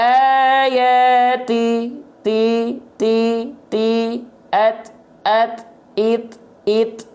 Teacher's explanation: dengan hams hams itu artinya adalah mengalir nafas tapi untuk pengkhususan untuk huruf ta dan Kaf itu hanya berupa perecikan nafas percikan nafas